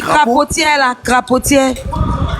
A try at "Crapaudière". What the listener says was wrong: C'est la fin là qui cause problème, c'est dière, D.